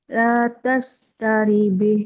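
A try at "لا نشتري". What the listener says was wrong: Bukan tak, bukan tak. La nashtari.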